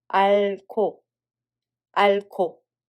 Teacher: There is a hieut at the batchim so following consonant [ㄱ] sound becomes [ㅋ]